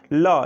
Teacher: वायु आपके जीभ के दोनों साइड से, दोनों बगल से निकल जाते हैं, पार्श्व से निकल जाते हैं वायु। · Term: पार्श्विक व्यंजन